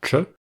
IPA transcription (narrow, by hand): t͡ʃ